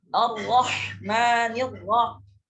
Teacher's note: Ra di sini ar-ra dengan ar-rahim, ar-rahman dengan ar-rahim, ra-nya itu dibaca tebal. Ya. Dibaca tebal ketika mengucapkan Ar-Rahman Ar-Rahim.